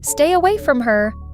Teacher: When you say stay away from her, stress away.